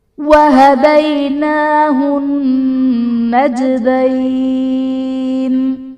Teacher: وَهَدَيْنَاهُ النَّجْدَيْنِ میں نون مشدد ہے، یہاں پر غنہ کریں گے۔ جیم حرف قلقلہ ساکن ہے، یہاں پر قلقلہ خوب ظاہر کریں گے۔